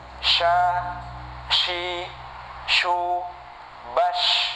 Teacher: Ini banyak udara yang keluar dari mulut kita ya. Ini dari sifatnya. Tetapi makhrajnya adalah dari wasatul lisan ya, dari tengah lidah kita. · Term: Shin